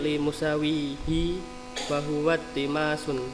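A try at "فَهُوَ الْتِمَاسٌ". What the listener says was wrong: la iltimasun. Itu bukan alif lam ta'rif ya, itu huruf asli il. Fahuwa iltimasun. Tapi bisa juga dibaca langsung ya, fahuwal timasun ya. Lamnya tetap di sukun.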